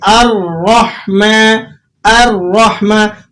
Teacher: اب یہ الرحمن جو لفظ ہے اس میں جو حمزہ ہے یہ لائٹ ویٹ ہے اور را ہیوی ویٹ ہے، تو آپ نے ان دونوں کو جب ملا کر ادا کرنا ہے تو اس میں بیلنس کو برابر رکھنا ہے، ٹھیک ہے۔ حمزہ کو لائٹ ویٹ میں پڑھنا ہے آپ نے اور را کو ہیوی ویٹ میں پڑھنا ہے